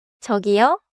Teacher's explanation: 저기요 goes up and stays there for a beat.